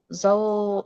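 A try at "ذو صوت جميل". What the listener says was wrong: Zu, zu, zu, bukan zau, zu.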